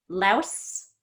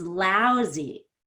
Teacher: So louse ends in an S sound, but lousy has a Z sound.